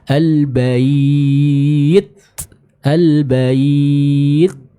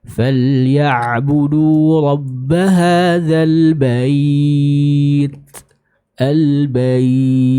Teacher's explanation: sempurna dulu sifat ciddahnya, lalu keluarkan sedikit nafas untuk menyempurnakan sifat hams dari huruf ta